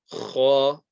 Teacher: it's a heavy letter, and the sound comes from the top part of the throat